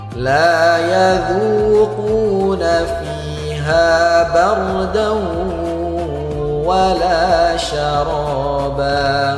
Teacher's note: Tanwin berjumpa dengan huruf wa, maka harus kita dengungkan 2 harokat. Hukumnya idgham bi gunnah.